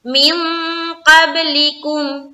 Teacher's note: من قبلکم، من، یہاں پر دیکھیں نون ساکن ہے اور نون ساکن کے بعد حرف قاف آ رہی ہے. یہاں پر ہم کر رہے ہیں اخفا کا قاعدہ، یعنی کہ ناک میں آواز کو چھپائیں گے. اس کے بعد قاف کو با سے ملاتے ہوئے ہم کریں گے قلقلہ.